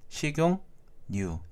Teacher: 식용유를 보면은 식용유, 니은이 추가가 됐죠. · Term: 니은 첨가